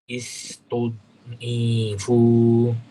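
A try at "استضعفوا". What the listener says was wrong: Panjang pendeknya. Setelah ain tidak ada huruf mat.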